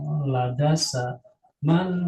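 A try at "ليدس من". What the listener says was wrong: pakai tasdid ladasa di sinnya yang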